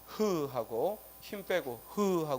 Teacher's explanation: 목청 소리는 한자로는 후음이라고 하죠. 그래서 흐하고 힘 빼고 흐하고 소리 내면 이 히읗을 우리가 목청 소리라고 합니다.